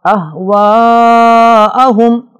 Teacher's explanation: اہواءہم بڑی مد ہے اسے کرنا ضروری ہے